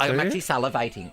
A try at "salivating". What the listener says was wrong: And the way you're saying salivating is weird. You're using every syllable.